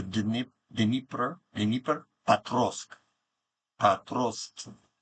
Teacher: You just kind of start the D and you go right into N.